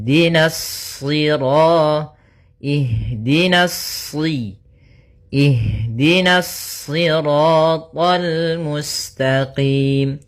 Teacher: na-nya tipis shad-nya baru yang ditebalkan